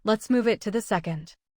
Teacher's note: To often becomes light and connects to the second. Still first and second remain clear because they carry the schedule change. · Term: linking